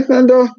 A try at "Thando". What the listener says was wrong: No. it's Thando. It's Thando. The H is silent.